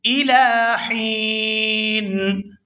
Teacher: ہا کو یا ساکن اور نون ساکن کے ساتھ ملاتے ہوئے کھینچ کر ادا کریں گے